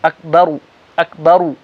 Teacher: حمزہ اور کاف دونوں پتلے، با پتلا، آگے را موٹا، اکبرو نہیں، اور بہت سے لوگ اکبارو بولتے ہیں، اکبارو بھی نہیں، اکبرو، را موٹا۔